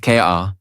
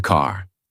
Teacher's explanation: In American accent, you clearly hear the R.